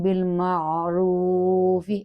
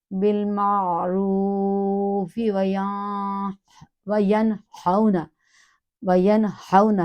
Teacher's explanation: اپنی آواز کو دھکا نہیں دینا، پش نہیں کرنا، بڑے آرام سے ایئر کو اندر لے جائیں اور اس کو ادا کرتے ہوئے، را کو پر پڑھتے ہوئے، کیونکہ را کے اوپر پیش ہے، اور یہ آگے حروف مدہ بھی ہے، واو سے اس کی ایک الف ادائیگی کرتے ہوئے